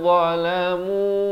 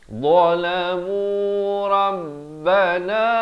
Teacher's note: Dha ni di hujung lidah ni, bunyi tebal dia.